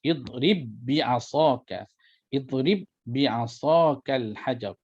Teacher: Jadi kita gabungkan, ya, wajib kita idghamkan, kita masukkan ba yang pertama ke dalam ba yang kedua dan telah digugurkan qalqalah pada huruf ba yang pertama